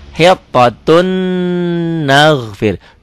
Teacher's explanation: dua atau tanwin ketemu Nun hitotun nagfir jadi ditahan hitotun nagfir tulisannya hitotun ada n-nya n-nya masuk ke n berikutnya hitotun nagfir enggak kelihatan karena hitotun kan bunyi n ketemu n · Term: peleburannya